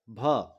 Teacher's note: जिसे ओठ से निकलता है और महाप्राण है, व्यंजन है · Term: ओष्ठ महाप्राण व्यंजन वर्ण